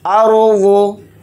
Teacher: रॉय साकिना को यहाँ पर मोटा यानी पुर पढ़ेंगे क्योंकि रॉय साकिना से पहले ज़बर आ रहा है, इसलिए इस रॉ को मोटा पढ़ेंगे।